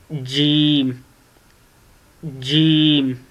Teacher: आपके दोनों ऊपर और नीचे वाले दांत दोनों आपस में जुड़ जाते हैं और ज़बान का जो चौड़ाई का हिस्सा है ये ऊपर तालू के साथ लग जाता है